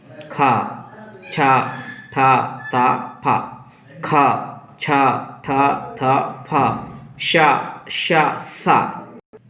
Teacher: इसमें केवल श्वास बाहर आता है, इसलिए हम इन वर्णों को अघोष वर्ण कहते हैं।